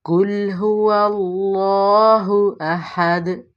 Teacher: یہاں پہ اللہ کو موٹا اور پر پڑھیں گے، اور ہو یہاں پہ جو ہے اس کو ہم حلق کے آخری حصے سے ادا کریں گے، احد اس کو یہاں پہ جو ہا آ رہا ہے اس کو حلق کے وسط سے ادا کریں گے۔